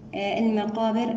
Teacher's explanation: المقابر هنا اللام ساكنة تكون يعني لدينا صفة البينية للام. الم، الميم هنا مرققة.